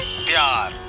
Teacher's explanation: प्यार शब्द में हम प और य दोनों को मिलाकर बोलते हैं। इसमें प की ध्वनि कम और य की ध्वनि अधिक होती है। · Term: संयुक्ताक्षर